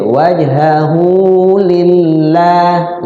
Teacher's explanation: hu matsilah qasira dibaca panjang tapi jangan panjang-panjang ya, sekedar diayun aja. Wajhahu lillah lafzul zalalah ya, huruf lafzul Allah ketemu dengan huruf yang sebelumnya berbaris kasroh, berarti dibaca tipis artinya tertib.